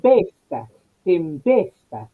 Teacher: tempesta, ahí está la E, claramente abierta en la fonética, claro. la E es abierta.